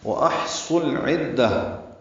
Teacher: حمزہ اقصی حلق سے، ہا وسط حلق سے ادا کریں گے، ہا پہ ہمس ہوگا. صاد پر پڑھیں گے اور لام سے ملائیں گے، اظہار قمری ہوگا. واحصل صاد پر ہے، لام باریک ہے، عین وسط حلق سے ادا ہوگا، دال سے ملانا ہے، دال کو تاء مربوطہ سے ملا دیں گے، وقفاً یہ ہا میں تبدیل ہو جائے گی.